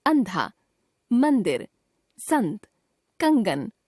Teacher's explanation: अनुस्वार का उच्चारण करते समय हवा नाक से बाहर आती है।